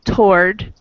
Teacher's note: So, toward, we kind of have, we don't really pronounce all of the syllable there. It's really just one syllable, toward. Instead of forward, we have two.